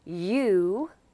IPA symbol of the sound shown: u: